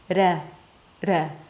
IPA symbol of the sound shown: ɾ